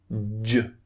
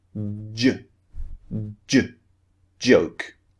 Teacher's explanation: Look at the shape of my mouth, j. The lips are coming out again, j. Not exactly rounded, but they're being pushed out.